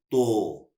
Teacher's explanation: जैसे ते में जबान लग रही है वहीं पे जबान लगेगी, लेकिन हमारे जो ये होंठ हैं ये गोल हो जाएंगे, यूं। तब आवाज निकलेगी, जब आप वहां से आप जबान को हटाएंगे तो आवाज निकलेगी तो।